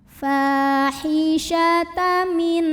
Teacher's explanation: Ya'tinal fa mad tabi'i karena ada alif yang didahului baris fathah. Cara membacanya dipanjangkan fa-nya dua harokat.